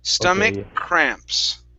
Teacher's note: end of this word we pronounce this like a a k that k can mix right along with that c sound so i only pronounce one sound